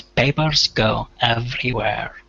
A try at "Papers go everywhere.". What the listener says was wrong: So on everywhere, make sure to get that R on every. Where at the end was good, but the R on every, you hit that R, hard R.